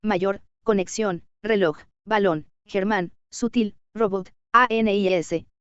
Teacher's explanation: Las palabras se clasifican en agudas, la mayor fuerza de voz sobre la última sílaba